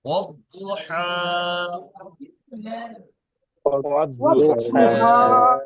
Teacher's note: হরফে শামসি যে 15টি আছে, এই 15টি অক্ষরের মধ্যে হরফে শামসি 15টি অক্ষরের মধ্যে দাদ এসছে, সেই জন্য আলিফ এবং লামকে দুটোইকে বাদ দিতে হবে।